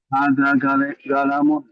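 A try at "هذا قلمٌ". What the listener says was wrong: Hada qaf bil qaf. Hada qalamun. Qalamun.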